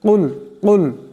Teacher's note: উচ্চারণ করলে খুব সহজেই উচ্চারণটা শুদ্ধ হয়ে যাবে ইনশাআল্লাহ কুল এখানে বড় কাফ আছে আওয়াজটি গলা থেকে আনতে হবে